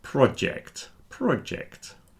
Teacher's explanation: So we've got r with a soft r, pr, and a strong j. So the r is soft and the j is strong.